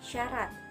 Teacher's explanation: Yang ke-13 bunyi S. Ciri-cirinya mati, laminopalatal, frikatif.